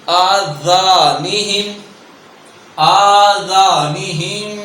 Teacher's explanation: ہم پڑھ دیتے ہیں آذانہم، جو کہ یہاں زا ادا ہوتا ہے، اب یہاں ذال ہے بغیر سیٹی کے اور باریک ادا ہوگا